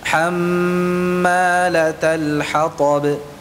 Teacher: dipanjangkan durasi gunnahnya atau suara dengungnya panjang. Ya, baik itu pada nun tasydid maupun mim tasydid.